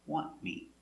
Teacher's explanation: NT between two consonants, you don't hear the T. Want me. The tongue goes up a little bit, but you don't hear it. Want me, want me.